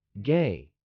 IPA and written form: ɡeɪ (gay)